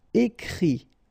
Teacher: And then the IT, phonetically you pronounce I because final T is not pronounced